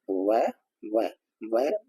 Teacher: जब हमारे जो नीचे वाले दांत ऊपर वाले होठों को स्पर्श करते हैं तो हमारा हो गया दंतोष्ठ, जहां दांत और ओष्ठ दोनों का स्पर्श होता है। · जरा करके देखिए व, तो हम देखेंगे नीचे के दांत ऊपर वाले होठ को टच कर रहे हैं